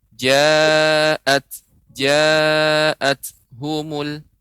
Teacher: Kemudian catatan berikutnya yang kedua, ja'at humul ta, ya, ketika sukun maka sifatnya adalah hamas, ya, adanya aliran udara sedikit, ya, keluar udara.